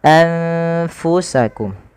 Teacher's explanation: Makhraj huruf fa di mana? Makhrajnya adalah di bibir kita, yang mana dia tidak merapat sekali antara bibir bawah dan atas. lebih kepada masih ada sedikit rongganya.